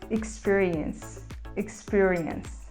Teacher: a gente fala ela com um e mais próximo do e fechado